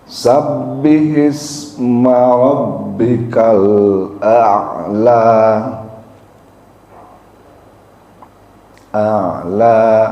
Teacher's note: Jadi bukan ala, bukan sabbihisma rabbikal a'la atau ala, bukan, tapi a'la. Jadi hamzahnya diucapkan dulu, baru ada ain di situ yang dimatikan atau yang disukun ya